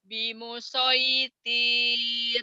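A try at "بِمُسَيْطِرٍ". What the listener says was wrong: Pendek. Bimusayyatir. Bimusayyatir.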